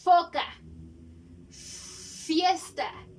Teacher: Aquí juntamos los dientitos con el labio y sacamos el aire